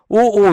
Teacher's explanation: उ ऊ दोनों होठों के गोल होने से और वहीं से उच्चारित होते हैं। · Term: ओष्ठ